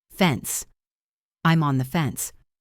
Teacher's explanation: Listen to the pronunciation of fence. It ends with a clean S sound.